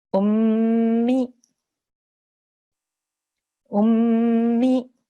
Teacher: you can hear that I'm holding that meme sound and pushing on it for about 2 seconds. And also you can hear the sound which comes from the nasal pipe, the nose pipe.